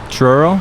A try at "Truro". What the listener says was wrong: Yeah, there's no CH, but it's T.